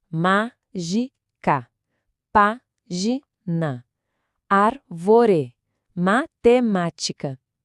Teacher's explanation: A força tá na antepenúltima sílaba e o acento tá sempre lá marcando presença. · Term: proparoxítona